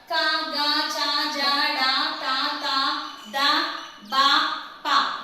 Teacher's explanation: Next అల్ప ప్రాణ అక్షరాలు ఏంటి అల్ప ప్రాణ అక్షరాలు వీటినే పొట్టిగా పలికే అక్షరాలని తేలికగా పలికే అక్షరాలని కూడా చెప్పుకుంటాం. అల్ప ప్రాణ అక్షరాలు అంటే చాలా తేలికగా పలుకుతాం.